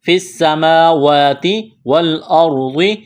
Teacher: یہاں را ساکن سے پہلے زبر ہے تو را کو موٹا کرنا ہے ، والارض، ضاد کو موٹا کرنا ہے، طوعا، واو زبر تو